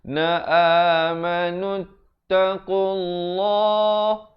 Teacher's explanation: Dibacakan lafzul jalalah itu dengan tebal 2 harakat